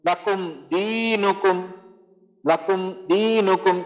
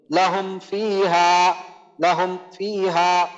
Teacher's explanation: মিম সাকিনকে আমাদের ডাইরেক্ট উচ্চারণ করতে হবে কোনো রকম গুণনা ছাড়া নরমাল ভাবে পড়তে হবে